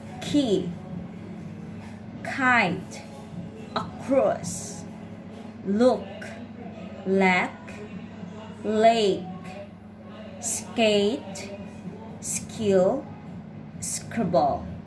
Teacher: The K sound is made with a strong puff of air at the beginning of words and syllables.